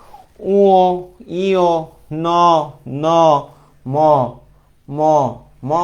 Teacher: উচ্চারণ করার সময় নাকের ব্যবহার হচ্ছে। নাকটা একটু কেঁপে উঠতেছে হালকা করে। তাহলে এই যে নাকের ব্যবহার হচ্ছে এজন্য এদেরকে বলা হয় নাসিক্য ধনি। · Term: নাসিক্য ধ্বনি